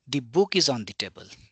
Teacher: I am giving emphasis on the word book